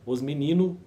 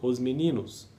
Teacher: o português brasileiro omite a consoante travadora. Exemplo, os menino por os meninos, falar por falar.